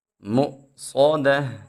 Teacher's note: حمزہ ساکن کو ہم خوب جھٹکا دے کے سختی سے ادا کرتے ہیں اور صاد کو موٹا پڑیں گے